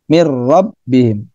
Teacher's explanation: Sekedar masuk saja nun matinya pada huruf ro sehingga nun matinya tidak dibaca, hanya dibaca ro, mir rabb, melebur ya. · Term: Idgham bila guna